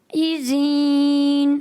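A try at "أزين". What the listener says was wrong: ایزین یا ایزین؟ ان کو کھینچیں گے یا نہیں کھینچیں گے؟ آپ کھینچ رہے ہیں پیارے بچے. جی نہیں کھینچے. ایزین. اچھا ایزین صحیح ہے. ایزین غلط ہے. ذال نہیں پڑھیں گے، زا پڑھیں گے. زا پڑھیں گے یا ذال پڑھیں گے؟ زا پڑھیں گے.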